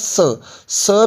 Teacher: स के उच्चारण में भी आपकी जीव जो है वो दांतों के साथ टच में लगती होती है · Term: दंत मूल